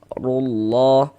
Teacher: Ini huruf ra kita baca tafkhim, kita baca tebal. Sehingga dengan mengangkat pangkal lidah kita ketika kita mengucapkannya. Rullah. Kemudian ini kita baca rullah, jangan dibaca rulla.